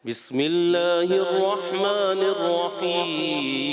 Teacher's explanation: بسم اللہ الرحمن الرحیم رحیم ناک کی طرف نہ جائے